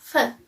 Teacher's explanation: it articulates with lower lip touching upper front teeth, and its manner of articulation is fricative. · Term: labiodental